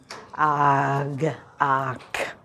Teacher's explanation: You end up with a full stop of a g or a k sound.